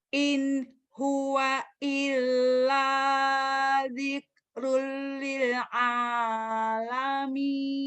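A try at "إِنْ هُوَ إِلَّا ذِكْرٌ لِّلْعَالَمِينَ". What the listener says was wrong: Tuh udah bagus, cuman hamasnya belum keluar. Susah hamasnya ya. Diksh. Nanti latih. Iya, latihnya Ibu gini pelan ya. Sambil bercermin. Sambil lihat videonya. In huwa illa dzikrul lil alamin. Bukan hanya Ibu. Saya juga kadang-kadang hamas maka keluar. Kalau baca cepat apa lagi. Tapi dilatih. Sebisa dan semampu kita.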